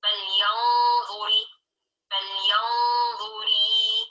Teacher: Yang seharusnya hanya kasroh, lalu kelebihan ya.